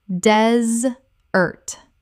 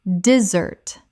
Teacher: The noun desert has stress on the first syllable.